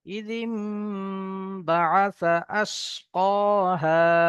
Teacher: এখানে নুন সাকিনের পরে বা এসছে, এখানে নুন সাকিনের আওয়াজকে মিমের দ্বারা তো পরিবর্তন করে পড়তে হবে। জি, একালি পরিমাণ গুণনা করে পড়তে হবে। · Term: ইকলাব